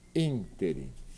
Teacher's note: É a antepenúltima sílaba que é forte, ela é pronunciada interim.